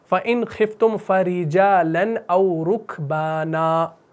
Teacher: فرجالن میں را کو باریک پڑھنا ہے اور او رکبانا میں را کو جو ہے موٹا پڑھنا ہے